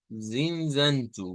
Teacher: vean que hay dos vocales nasalizadas acá